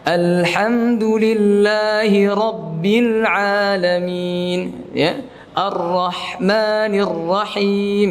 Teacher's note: huruf H Ketika disukun Harus mengalirnya ya